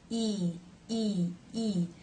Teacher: the front part of the tongue raises very high towards the roof of the mouth, while the tip still remains down, lightly touching behind the bottom front teeth. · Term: the e as in she vowel, E as in she